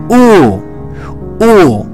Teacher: Türkçedeki u sesine benzer bir ses veriyor Ancak biraz daha uzatıyoruz